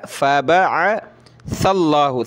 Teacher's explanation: سا پہ زبان نکالیں تھوڑی سی اور سا کو آگے پلس کریں